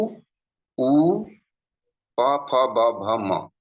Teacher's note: मुख्य रूप से ये 7 वर्ण ओष्ठ्य वर्ण होता है। आप इनका उच्चारण होठों से ही कर सकते हैं, होठों की सहायता से।